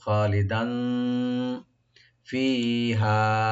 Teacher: দালের উপর যে তানবিন আছে আমরা ইখফা করব